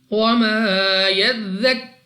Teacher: را کے اوپر ہے پیش، تو را کو پر یعنی موٹا پڑھیں گے